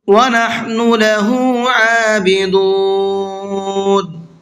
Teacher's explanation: عابدون کا عین کو کھینچ کر کے بھی پڑھنا ہے اور حلق سے نکال کر کے بھی پڑھنا ہے